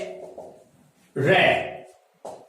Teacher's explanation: आप इस वर्ण का उच्चारण करके देखिए, इस ध्वनि का उच्चारण करके देखिए, ऐसा लगेगा कि जिसका उच्चारण करते समय हवा लुढ़कते हुए जीभ के ऊपर से आ रही हो, धड़धड़ाते हुए, थरथराते हुए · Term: प्रकंपित